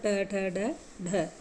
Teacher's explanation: मूर्धन्य व्यंजन होते हैं जिनका उच्चारण मूर्धा से होता है